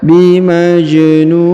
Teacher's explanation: Huruf ja berharokat sukun, maka kita pantulkan atau kita qalqalahkan.